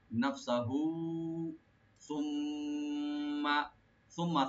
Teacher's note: ইদগাম না, মিম এখানে ডাবল করে পড়তে হবে, মাধ্যম মিম সাদ্দা মুসাদ্দাদ। তো সুম্মা মিমটাকে ডাবল করে গুণা সহকারে পড়তে হবে, সুম্মা কিন্তু টান হবে না।